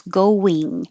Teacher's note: And the it means the back of your tongue is very high, like ring, and the air is coming out your nose